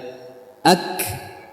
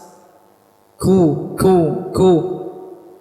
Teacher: pangkal lidah bertemu dengan antara langit-langit yang lunak dan langit-langit yang keras ya ak dan juga dia punya sifat Hames ku ku ku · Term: huruf Kaf, huruf kaf